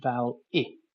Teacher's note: we'll start off with a fairly close front vowel in English